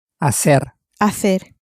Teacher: the H at the beginning is silent, as it always is in Spanish.